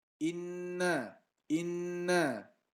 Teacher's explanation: Gunnah, dengungnya di hidung. Huruf nun bertasydid.